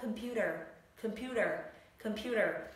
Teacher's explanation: chữ T ạ, mà đứng giữa hai nguyên âm thì nó sẽ được biến đổi thành flat T, tức là đọc thành chữ D. Thoải mái đọc nó thành chữ D, âm D được.